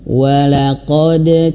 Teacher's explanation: ada Dal yang Qalqalah ingat Dal mantul